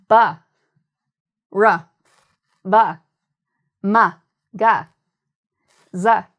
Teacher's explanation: the voice box or the vocal cords, they move, they vibrate. So then when the air hits them, it creates this Z sound, this buzzing sound. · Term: voiced sound